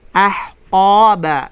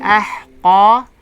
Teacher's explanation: yung ha ay sakina at ang qaf ay makapal